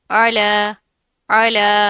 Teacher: آئین کی آواز کو واضح کریں گے، کھڑا زبر آ رہا ہے، ایک الف کے برابر پڑا جائے گا